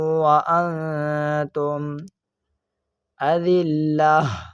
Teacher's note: اس میم ساکن میں اظہار شفوی کا قاعدہ لگ رہا ہے، اس وجہ سے ہم اس میم ساکن میں گننا نہیں کریں گے